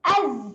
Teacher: Hamzah nganga, zai sukun, tolak sahaja hujung lidah dekat belakang gigi bawah, menghasilkan bunyi az.